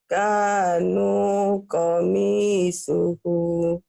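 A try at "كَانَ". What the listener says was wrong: kana bukan kanu ya. Tapi nanya pendek. Kana kanya panjang.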